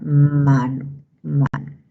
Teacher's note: la M es un sonido nasal bilabial sonoro